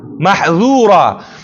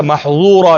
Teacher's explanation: محذورا کې انفتاح ده، دا چې ته محظورا نشي.